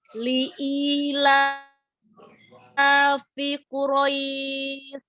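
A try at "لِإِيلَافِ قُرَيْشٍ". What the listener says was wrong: Iya, i-nya jangan ke hidung. Li'i enggak. Li'i li'ilafi Quraisy. Semua huruf tidak ke hidung. Coba huruf iya-nya jangan ke hidung. Li'i al-jauf itu ya.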